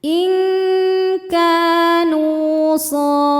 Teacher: Karena nun sukun bertemu dengan huruf kaf. Cara bacanya nunnya disamarkan ke kaf kemudian dengungkan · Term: ikhfa hakiki ab'ad